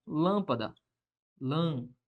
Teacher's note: Proparoxítona, a sílaba tônica é a antepenúltima